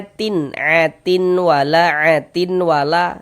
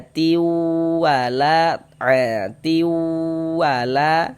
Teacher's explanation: Tapi dibaca atiu wala seperti itu. Jadi di bagian tiunya itu suaranya itu kita tahan, kita masukkan ya, kemudian kita tahan, kita panjangkan sepanjang 2 harokat, kita gunnahkan. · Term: idgham bi gunnah, idgham bighunah